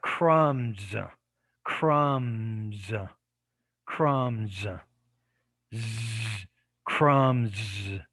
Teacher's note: the s is going to be influenced by the b so because the b is a voiced consonant then the s becomes voiced and it changes to a z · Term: assimilation